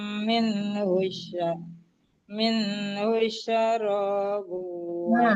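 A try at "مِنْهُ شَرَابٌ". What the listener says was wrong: Nah, Bu, min hush itu enggak tasdid sinnya. Min hush syajarabun. Min hush. Sinnya kan enggak tasdid. Min hush syaro. Jangan hush.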